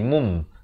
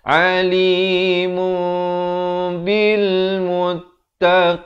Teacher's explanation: ditukarkan bunyi nun tersebut kepada bunyi mim jadi mum. Tapi jangan lupa panjangkan 2 harakat. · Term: hukum iqlab